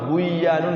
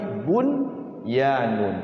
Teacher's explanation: enggak boleh buyanun tapi bunyan. Wajib izhar nunnya ini.